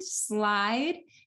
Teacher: you're taking an obstruent, which is the S sound, and you're combining it with a lateral liquid in which the airflow is sonorous